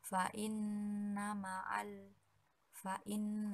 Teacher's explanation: nama alfain nah Hai guna disebabkan karena Nun bertanda tasydid dan cara membacanya itu dengan dengung serta ditahan selama tiga harokat